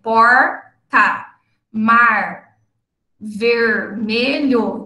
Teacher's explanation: final de sílaba por exemplo por Mar Vermelho então Observe no quando é que aparece no final da sílaba nós fazemos a retroflexão · nós só usamos o R retroflexo em posição de coda, ou seja, em final de sílaba